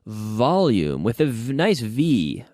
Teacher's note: The V is essentially an F with the vocal cords activated.